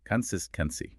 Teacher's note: Feel that emphasis land right on sis.